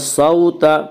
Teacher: واولین وہ واو جو ساکن اس سے پہلے زبر ہو، واولین کو نرم آواز کے ساتھ جلدی پڑھیں گے۔ صوت توا کو پر پڑھیں گے، توا حروف مستعلیہ میں سے ہے، حروف مستعلیہ سات ہیں جن کا مجموعہ خصہ ضغط قز ہے، یعنی خاص صاد زاد غین طوا قاف ضاد، یہ حروف ہمیشہ ہر حال میں پر پڑھے جاتے ہیں، یعنی موٹے پڑھے جاتے ہیں۔